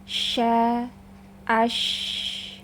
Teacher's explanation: Makhraj huruf shin itu dari tengah lidah mendekat ke langit-langit bagian atas.